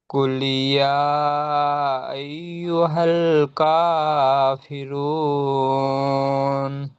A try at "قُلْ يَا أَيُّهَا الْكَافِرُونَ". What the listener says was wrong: ভালোই পড়েছেন, আলহামদুলিল্লাহ।